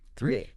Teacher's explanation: You really have to put your tongue right between your teeth for that three.